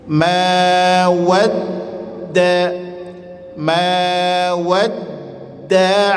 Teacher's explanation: Ma wadda tekan dal tasydid asli di situ.